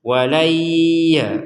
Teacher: Jadi kita jeda dulu 2 harokat untuk dengung. Walayya, jadi didengungkan dulu di rongga hidung. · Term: dengungan